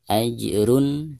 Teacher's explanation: ada dammahtain tanwin pada huruf ro. Kemudian diikuti oleh salah satu huruf izhar, di sini huruf ghain. Jadi, cara membaca tanwin harus jelas.